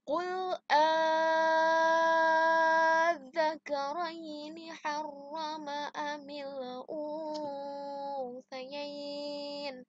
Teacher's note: langsung diidghamkan atau dimasukkan ke huruf berikutnya, yaitu ada zal bertasydid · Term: mat farqi